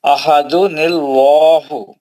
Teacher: اللہ نہیں موٹا پڑھنا ہے، لام جلالہ ہے. جی جی احدن اللہ.